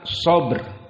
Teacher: sini huruf tafim yang kedua maka ba kokoh dan di sini dalam keadaan ba sukun maka di sini dia mempunyai sifat Qalqalah